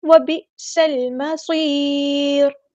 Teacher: حمزہ کی آواز میں جھٹکا لے کے آئیں گے، حمزہ ساکن ہے تو جھٹکے کے ساتھ ادا ہوگا · سین کو ہم نے لام کے ساتھ ملا دینا ہے، حمزہ الوصل ہمارا ڈراپ ہو جائے گا · سین کی سیٹی ہم نے واضح کرنی ہے